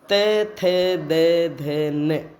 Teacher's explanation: जिन व्यंजनों का उच्चारण करते समय जिह्वा नोक ऊपर उठकर दंत पंक्ति को छूती है, हाँ, मतलब हमारे दांतों को छूती है, तो दंत व्यंजन ध्वनियाँ उत्पन्न होती है। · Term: दंत्य व्यंजन